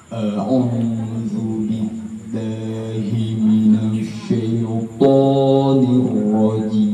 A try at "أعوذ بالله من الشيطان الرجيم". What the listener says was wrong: Di huruf to dia agak kasar ya tadi ya. Karena kan huruf vokal huruf isti'la itu dia o, ini dia po.